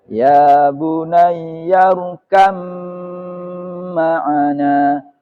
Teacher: jadi membacanya, baknya melebur ke mim. Hilang sama sekali baknya. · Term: idgham mutaja nisan